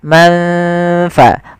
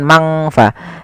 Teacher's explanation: samarkan ke huruf fa. Manfa bukan mangfa. Tidak semua bacaan ikhfa dibaca dengan ng, tapi dia disesuaikan dengan hurufnya dan sifatnya. · Sedangkan ikhfa adalah membaca suara nun di antara keduanya, di antara izhar dan idgham. Maka samarkan ke huruf fa, manfa, bukan mangfa.